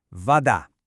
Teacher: the key here is that the stress is on that second syllable, the da